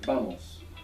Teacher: now this is the v a m o s and what you probably hear there is a b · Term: soft B